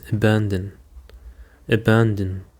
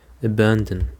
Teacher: The stress is on the second syllable, abandon.